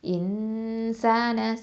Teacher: நூன் சாக்கினாவை மறைச்சு குன்னா செஞ்சு ஓதணும். இன்சான சீன் ஃபத்தா அலிஃப் சகீரா ச 2 ஹரக்கத்து. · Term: இஹ்ஃபா